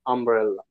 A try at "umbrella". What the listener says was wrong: Yeah, underneath.